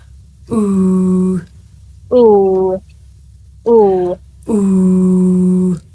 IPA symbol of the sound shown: u: